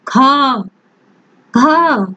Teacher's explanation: महाप्राण उसे कहते हैं जिसे उच्चारित करते समय हमारे मुख से अधिक वायु निकलती है, प्लस उसमें हाकार की यानी कि गर्जना की भी सुनाई देती है, ध्वनि सुनाई देती है। · ख, घ, इसमें हमारे मुख से हवा भी ज्यादा निकल रही है और इसमें हकार की भावना भी है।